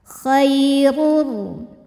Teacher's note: huruf ro dibunyikan secara tafkhim karena ro berharakat damah